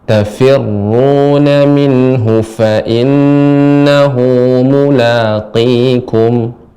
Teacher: Untuk huruf qaf ketika kasrah mulaqi lebih ditebalkan lagi ibu, ya, lebih diperjelas lagi.